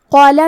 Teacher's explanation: کلمت قالا میں حرف القاف کی ادائیگی زبان کی جڑ اور تالو کے نرم حصے سے ہے